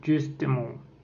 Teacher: C'est une voyelle antérieure arrondie et orale. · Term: E caduc